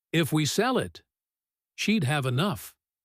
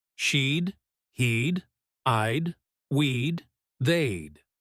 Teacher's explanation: Notice that little sound sheed, which is actually she would squeezed together.